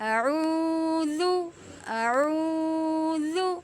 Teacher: ذال کو ہم نرمی سے پڑھیں گے، اس میں سٹی کی آواز نہیں نکالیں گے